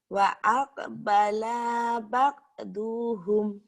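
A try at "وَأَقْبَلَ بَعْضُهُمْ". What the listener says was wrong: La-nya pendek. Wa aqbala ba'duhum.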